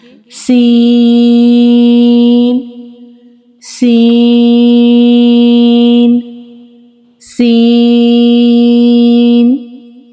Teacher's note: سین ایک باریک حرف ہے، اسے باریکی کے ساتھ اور سیٹی والی آواز کے ساتھ ادا کریں گے